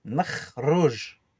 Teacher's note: Il y a le kh, un R raclé au fond de la gorge, celui-là. Et il y a le R roulé après.